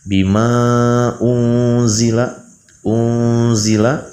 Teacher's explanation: Unzila, seterusnya unzila ada nun berharakat sukun, setelahnya ada huruf zai. Maka hukumnya adalah ikhfa. Ikhfa ausat. Unzila ditahan dua harakat.